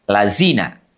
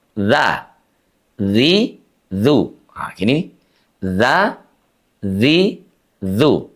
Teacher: huruf zal, sahabat Al-Quran, diucapkan dengan menyentuhkan ujung lidah kita dengan gigi seri atas.